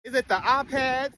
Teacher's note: And you say ah instead of I or I in words like iPad.